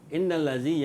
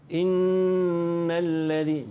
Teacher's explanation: Innal ladzi, yang ni dengung dengan qadar 2 harakat.